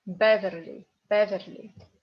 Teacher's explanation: this Y we read like E because it's in unstressed position